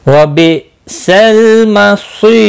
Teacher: हमजा साकिन को झटके के साथ पढ़ेंगे